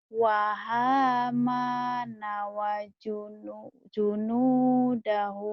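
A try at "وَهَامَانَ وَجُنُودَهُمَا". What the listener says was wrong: Wahamana wajunu. Nggak boleh junudahuma. Harus satu. Satu satuan.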